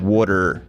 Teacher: an American in general wouldn't pronounce the T